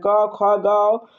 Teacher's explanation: क जो है कंठ से खुलता है। क्या है? कंठ से बोला जाता है।